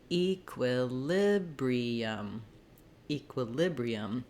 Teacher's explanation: we just have the clear vowel on the E which is why it gets that stress marker